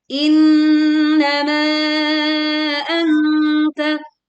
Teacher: Innama anta ma dibaca panjang 4 sampai 5 harakat. · ma dibaca panjang 4 sampai 5 harokat, kemudian sempurnakan dengung saat membaca anta